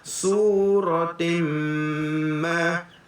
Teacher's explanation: Jumpa tanwin bertemu dengan min, dengung 2 harakat, dengung tutup mulut.